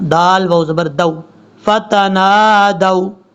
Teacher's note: دال کو جب واو سے ملائیں گے تو واو کو لمبا نہیں کرنا